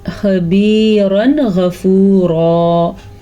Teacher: یہ تنوین کے بعد غین آ گیا تو اسے ہم نے ظاہر کر کے پڑھا، اس پہ کہیں غنہ کسی قسم کا رکنا نہیں ہے۔ یہاں پہ رک گئے تو ہم بڑی غلطی کر لیں گے، یعنی بعض لوگ پڑھے خبیرن، نہیں، خبیرن غفورا۔ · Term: اظہار